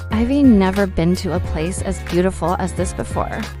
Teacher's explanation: The key words never beautiful and before are stressed. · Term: stress patterns